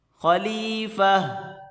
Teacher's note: گولتا کو وقف کی صورت میں ہاں میں کنورٹ کر دیں گے. وقف کی صورت میں خلیفہ.